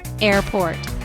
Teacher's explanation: It is a two-syllable word. Stress is on the first syllable.